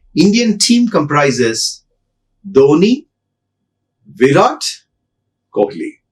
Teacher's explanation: Last name with a falling tone.